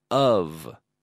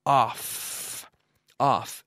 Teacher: we have the F vocalized or voiced which is essentially a V sound